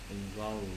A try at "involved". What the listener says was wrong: The V and the D sound want to be heard very strong. Involved.